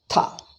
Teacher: Simple Mahaprana, Tha, without Visarga.